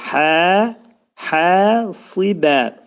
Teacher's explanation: Hə hərfi boğazın ortasından çıxarılır və iki səs qədər qaldırılacaq. Çünki həddən sonra təbii mədli hərf gəlir.